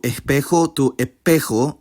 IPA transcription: eˈʰpexo